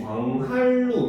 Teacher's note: 그럼 여기서 있는 두 번째 음절의 니은이 리을로 변했잖아요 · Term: 역행